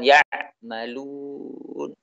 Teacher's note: Terputusnya suara ain ketika mengucapkannya dalam keadaan sukun.